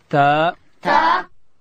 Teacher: تا ادا کیږي چې کله د لوړې زامې د مخ دوه غاښو بیخو ته د ژبې سر وروړو، دلته حرف تا ادا کیږي.